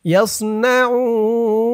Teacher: এখানে অক্ফ করার কারণে পেশের পরে ওয়াও সাকিন এক আলিফ টানটা 3 আলিফ টান হয়ে গেছে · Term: মধ্যে আরজি